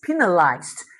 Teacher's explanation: You might see s as a letter but the sound is z. You feel the vibration of the vocal cords and that's why the ED becomes d.